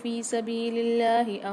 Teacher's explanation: یہاں اللہ کے لام کو باریک کر کے پڑھیں گے کیونکہ اللہ کے لام سے پہلے زیر ہے